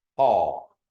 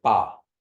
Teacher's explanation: if you say paw first, like paw, you feel like a little puff of air, and then say ba.